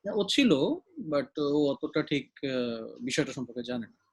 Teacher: আমি যখন আপনাকে একটা সেন্টেন্স একটা ইনফরমেশন দিচ্ছি, that is one kind of delivery. টোনটা flat থাকে নয় নিচের দিকে চলে যায় শেষ হতে হতে।